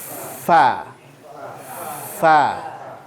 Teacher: Sedangkan fa makhrajnya adalah bibir juga, tapi dia bukan dua bibir. Tarfu athana al-ulya ila batani syafa' as-sufla.